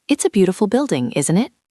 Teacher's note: Your voice dropped on isn't it?